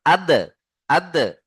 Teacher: একটি তাই না এখানে ভালো করে লক্ষ্য করেন কলকলার যে পাঁচটি অক্ষর কি কি রয়েছে কফ ত বা জিম দাল মনে আছে তো সবার তাহলে এখানে দালের উপরে সাকিন এসে দালকে কলকলা করতে হবে কলকলা কেমন করে করতে হয় মাখরাজে ধাক্কা দিতে হয় দালের মাখরাজ যেখানে রয়েছে সেই দালের মাখরাজে ধাক্কা দিয়ে তার আগের অক্ষরের সাথে মিলিয়ে পড়তে হয়